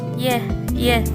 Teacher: dibentuk dengan depan lidah menyentuh atau mendekati langit-langit